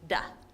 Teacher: So B and P are made by your lips coming together, building up pressure, releasing that pressure, and you get a B. Or your tongue lifting to behind your teeth, creating pressure and releasing to make duh